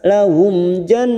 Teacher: mim sukun bertemu Jim Idhar syafawi kita baca jelas